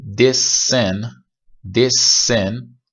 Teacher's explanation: this sin یکم نگه داشته میشه، یکم طولانی تر تلفظ میشه، ولی این یکی this sin. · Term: gemination